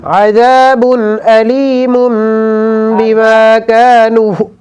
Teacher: عذاب کے اوپر غنہ نہیں ہوگا، یہاں اظہار ہوگا